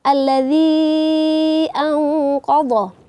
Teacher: Ini huruf mad bertemu dengan hamzah di beda kata, maka hukumnya menjadi mad jaiz munfasil. Kita baca panjangnya 4 atau 5 harokat.